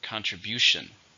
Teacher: So we have contribution, which is the same meaning, but it's a countable noun. There are 4 syllables, stresses on the third.